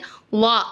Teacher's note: உங்களுக்கு காமிக்கிறேன் பாருங்க இது வந்து வா சரிங்களா இதை நம்ம எப்படி உச்சரிக்கணும்னா நாவினுடைய நுனிப்பகுதியை மேல் பல்லோட ஓரத்துல வச்சு வா அப்படின்னு சொல்லணும்